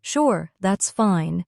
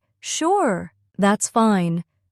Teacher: in a soft, slow voice, they may feel unsure. But if they say, Sure, that's fine, with a bright tone, they probably mean it happily.